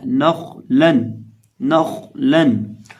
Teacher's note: खौ को मोटा करके पढ़ना है और बाकी नून और लाम को बारीक पढ़ना है